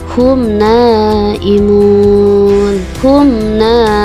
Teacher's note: humna mimnya ada dibaca dengan jelas makanya disebut dengan huruf Izhar humna tidak didengungkan ataupun dileburkan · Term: izhar syafawi